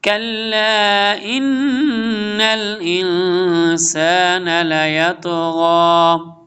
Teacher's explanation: کلا اس کے لام کے اوپر مد ہے، اس کو لمبا کریں گے، لانگ کریں گے.